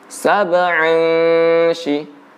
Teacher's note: Tanwin bertemu dengan shin maka didengungkan.